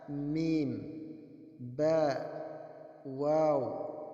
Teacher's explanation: berasal dari pertemuan antara bibir atas dan bibir bawah